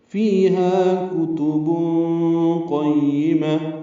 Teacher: فی آئے مدہ ہے، ہا الف مدہ ہے، 2 حرکات لمبا کریں گے